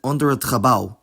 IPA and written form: ˈɔndəɹ ət χəˈbɑu̯ (onder het gebouw)